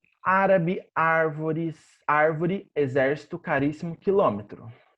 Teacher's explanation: Proparoxítonas, antepenúltimas sílabas tônicas.